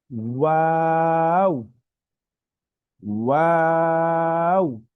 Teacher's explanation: দুই ঠোঁট গোল করে তারপর আমাদের হরফটা উচ্চারণ হবে